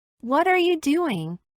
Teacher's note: la primera palabra que termina en t se une con la segunda palabra que Inicia con a con lo cual la t queda en medio de dos vocales y de acuerdo a la regla la t debe ser pronunciada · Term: flatti